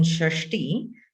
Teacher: not as flat as when you are saying sa sha right when you are saying sha as in Shashi your tongue is really curled up